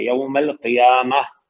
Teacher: یوم القیامہ میں یا کے اوپر کھڑا زبر ہے، الف مدہ ہے، 2 حرکات ہو جائیں گی. تا مربوطہ پہ جب وقف کرتے ہیں تو ہا کی آواز آتی ہے